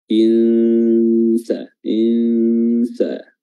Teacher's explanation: cara mengikhfa'kan atau menyamarkan huruf nun dengan meletakkan makhraj huruf sin ketika melafazkan nun tersebut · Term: ikhfa haqiqi